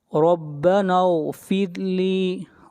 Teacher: ربنا را کو موٹا پڑھیں گے، نون کو ملائیں گے غین کے ساتھ، ربنا اغفر لی، را کو باریک پڑھیں گے، را سے پہلے زیر ہے